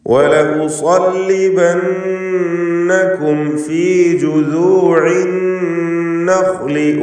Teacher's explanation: പദത്തിൻ്റെ അന്ത്യത്തിൽ സാക്കിനത്തായ മീം ശേഷം ഫാ ഇവിടെ സൂക്ഷ്മതയോടെ ഇൽഹാർ ചെയ്യുക. ഇൽഹാർ ശഫവി.